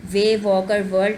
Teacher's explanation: इसमें जो W sound है, अब ये साउंड भी जो है ये बाइलेबियल है। इसमें भी आप अगर आप बोल कर अपनी प्रैक्टिस करके देखना चाहें तो आप देखेंगे कि इसमें आपके दोनों जो लिप्स हैं वो यूज़ हो रहे हैं।